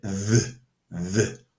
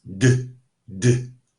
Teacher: For th, your tongue is touching, the tip of your tongue is touching your upper teeth. The d sound cannot be stretched out, but the th sound can be stretched out.